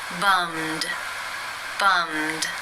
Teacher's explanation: the final sound in the infinitive is the m consonant sound it is voiced therefore it is case two and the e d is pronounced as the D